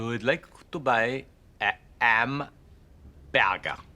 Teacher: H-dropping that is more familiar to us now, i.e. Hs being dropped before a vowel · H is being dropped before vowels